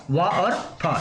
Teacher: ओठ कौन से वाले, निचले ओठ और ऊपरी दांत, ठीक है। तो ऊपरी दांत है और निचले ओठों से जिन वर्णों का उच्चारण होता है, उनको क्या कहते हैं, दंतोष्ठ कहते हैं।